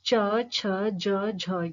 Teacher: स्पर्श संघर्षी उच्चारण में स्वास वायु का पहले स्पर्श करना फिर रगड़ खाकर बाहर निकलना